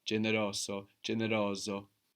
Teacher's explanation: this single s between vowels might sound well like an S or more like a Zed